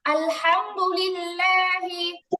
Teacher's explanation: আলহামদুলিল্লাহি লিল্লাহি আলহামদু যেন না হয়, হা একদম চাপ লাগবে গলায়